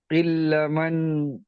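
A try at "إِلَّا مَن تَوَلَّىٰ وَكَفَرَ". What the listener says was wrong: ইল্লা টান দিয়ে বলেন।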